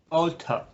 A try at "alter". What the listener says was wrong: be careful you don't make it long. Not alter, but just alter.